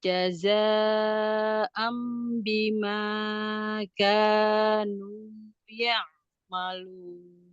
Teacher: Jaza mat bertemu dengan hamzah dalam satu kalimat mat wajib muntasil dibaca 4 sampai 5 harokat.